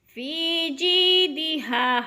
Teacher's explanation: فی جیدہا، ہا پہ الف مدہ، الف خالی سے پہلے ہا کے اوپر زبر ہے تو الف مدہ ایک الف کے برابر کھینچ کر پڑھنا ہے